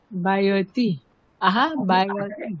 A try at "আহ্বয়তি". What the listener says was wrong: আটাকে উচ্চারণ করুন, আহা, হটাকে ছাড়তে বলবো, আপনি তো আয় ছেড়ে দিন। বাংলায় বলুন বয়তি। আহা বয়তি। বাংলায় বলুন আহা বয়তি।